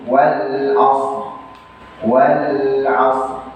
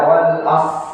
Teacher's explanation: Tetap ya membacanya dengan mensukunkan huruf ra tapi tidak sampai menimbulkan harokat.